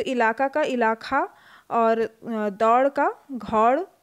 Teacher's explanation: महाप्राणीकरण की प्रवृत्ति अवधि में एक प्रमुख विशेषता है।